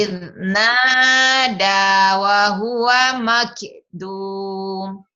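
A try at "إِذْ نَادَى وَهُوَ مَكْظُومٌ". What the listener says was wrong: bukan makdum, makzum, zo. Idnada wa huwa makzum.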